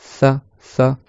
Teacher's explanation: comme si tu posais ta langue sous la dent de devant et tu laisses passer l'air entre la langue et la dent